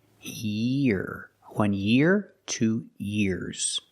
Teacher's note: Make the long E sound, connect it to the R.